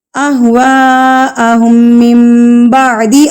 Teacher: مد متصل بڑی مد، اس کو 4 حرکات کے برابر کھینچنا ہے · اگر نون ساکن کے بعد آپ کے پاس با آ جائے تو نون ساکن اس میم میں تبدیل ہو جائے گا. یہ چھوٹی سی میم جو آپ کو نظر آ رہی ہے نا، اس میم میں تبدیل ہو جائے گا. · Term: اقلاب